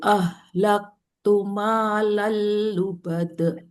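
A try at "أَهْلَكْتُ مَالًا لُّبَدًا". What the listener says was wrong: Panjang. Lal lubada panjang satu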